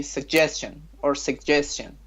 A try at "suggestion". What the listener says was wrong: Suggestion, American, yes.